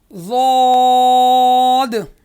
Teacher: ضاد کا مخرج ہے زبان کی کروٹ اور اوپر کے ڈاڑوں سے جب وہ کروٹ ٹچ ہوگی تو ضاد نکلے گا